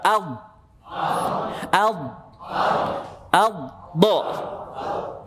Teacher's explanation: ujung lidah maju ke depan sampai menyentuh gusi gigi seri atas, kemudian ada tekanan udara dari belakang, itu istitolah pada dot. Biasanya terasa ketika dia berharokat sukun. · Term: sifat istitolah